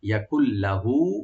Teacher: নুন সাকিনটা লামের সাথে একদম হয়ে যাবে, সংযোগ হয়ে যাবে, কিন্তু গুন্না হবে না এখানে, গুন্না ছাড়া। ইয়াকুল্লাহু হাটাকে একালে টানবেন।